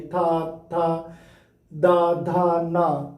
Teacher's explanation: दा धा ना बोलेंगे तो जीभ आकर के पूरी तरह से दांत में टकराती है